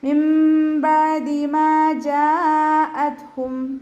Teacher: ഐന് ഹാഫ് സുക്കൂന് കൊടുക്കുക കേട്ടോ. തൊണ്ടയുടെ മധ്യഭാഗത്തു നിന്നാണ് വരുന്നത്, അതിൻ്റെ സൗണ്ട് ക്ലിയർ ആക്കി കൊടുക്കുക.